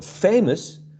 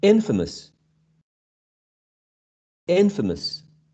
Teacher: there's a shift of stress so famous when you attach this prefix becomes infamous